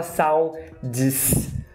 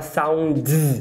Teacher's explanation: O único fenômeno fonológico que tem aqui é o S virando um Z na pronúncia, porque é escrito com S, né? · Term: vozeamento